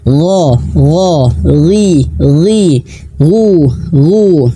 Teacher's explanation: Ghain juga memiliki sifat tebal ya.